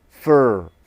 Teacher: The weak form is said more quickly and more softly. The vowel becomes the schwa sound.